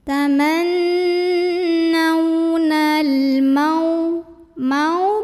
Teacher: Berikutnya ada hukum alif lam qamariyah karena alif lam menghadapi huruf qamariyah yaitu mim. Maka lam sukun ini dibaca dengan idhar atau jelas. Bunyi L-nya jelas, tidak mantul, tidak ditahan. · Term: idhar qamari